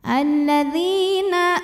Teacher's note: karena ada ya sukun yang sebelumnya didahului baris kasrah maka huruf dall ini dipanjangkan dua harakat